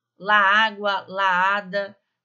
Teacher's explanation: Parece que é uma palavra só, né? Não dá para entender que eu tô falando o artigo e eu tô falando a palavra